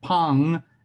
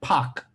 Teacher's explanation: one ends with a nasal and one that ends with a stop